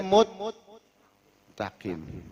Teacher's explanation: Muttaqim mestinya ada sin, di sini diidgham masuk ke ta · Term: arad